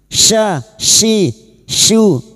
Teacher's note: huruf shin, sha, shi, shu wastul lisan atau tengah lidah